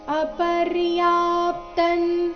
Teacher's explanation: ಇಲ್ಲಿ ಅಪರ್ಯಾ ಆದ ನಂತರ ಅರ್ಧ ಪಕಾರ ಮತ್ತೆ ಪೂರ್ತಿ ತ ಇದೆ ಅಪರ್ಯಾಪ್ತನ್ ತ ಆದ ನಂತರ ಬರೋ ಅನುಸ್ವಾರದ ಉಚ್ಚಾರಣೆ ಅನುನಾಸಿಕ ನ ತರ ಇದೆ